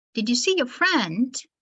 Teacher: the last word friend is pronounced with a rising tone